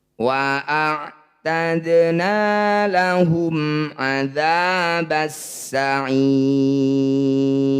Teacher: bunyi mim sukun baca jelas rapatkan bibir tidak usah dengung lahumaba selesaikan bunyi mim dulu baru pindah ke Ain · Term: izhar syafawi